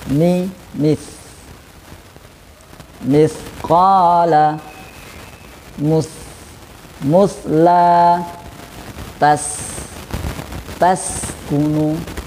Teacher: Jadi sin karena mempunyai sifat hamas, jadi mengalir nafas, ya, harus tetap mengalir nafas, ada udara yang keluar, maka tetap ada aliran udaranya.